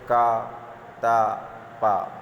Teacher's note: तो जो हमारी श्वास है वो बिना घर्षण और बहुत ही सरलता से बाहर आ जाती है। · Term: अघोष